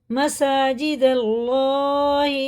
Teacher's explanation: دیکھیں دال اللہ کے نام میں لگتی ہے زبر کے ساتھ، تو زبر کے ساتھ جب اللہ کا نام آتا ہے تو پر پڑھا جاتا ہے، یعنی منہ بھر کے موٹا کر کے پڑھا جاتا ہے